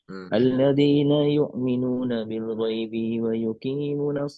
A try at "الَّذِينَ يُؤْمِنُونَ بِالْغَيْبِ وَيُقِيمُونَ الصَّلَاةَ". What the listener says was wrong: Bil ghaibina jangan dipanjangin. B-nya pendek. Alladzina yu'minuna bil ghaibi wa yuqimuna as-shalah. masih ada sedikit tambahan mat itu. Bil ghaibi tidak boleh. Di situ tidak.